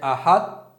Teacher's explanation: شروع میں ایسا لگا جیسے میں طا پڑھنے والا ہوں اور طا کے لیے میں گیا، لیکن جب باہر نکلا تو تا سے نکلا، تو تھوڑی سی آواز اس کی بھی آ گئی ہے اور اس کی بھی آ گئی ہے۔